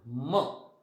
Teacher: नाकातून हवा जाते, तोंडातून आणि नाकातून.